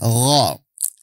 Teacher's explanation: Makhraj huruf gho adalah adnal halqi. Ujung tenggorokan. Makhrajnya adalah ujung tenggorokan.